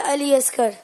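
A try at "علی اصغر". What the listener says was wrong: काफ बोला कि नहीं? असगर, दोबारा बोलो। गैन है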